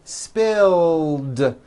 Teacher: spill ends with a voiced L sound spill so it becomes spilled